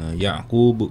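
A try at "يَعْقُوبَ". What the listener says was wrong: Betul.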